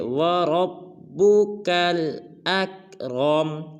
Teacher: را کو پر ادا کریں گے، کاف کو آگے لام ساکن کے ساتھ ملائیں گے